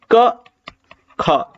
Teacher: पे देखो क ख ठीक है यानी पहला और दूसरा तो कोई भी आप देखो गले में कंपन नहीं पैदा हुआ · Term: अघोष